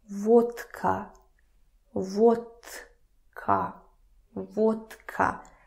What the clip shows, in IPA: votka